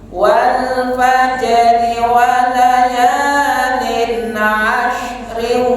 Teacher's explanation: Maka pantulan tetap hadir, roknya di kasroh.